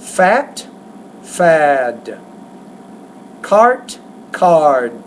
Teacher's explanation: when you put the D at the end of a word, the D is a voice consonant, so the vowel before it needs to be longer. But if you put the T at the end of a word, it's a voiceless consonant, and then the vowel should be shorter in that case.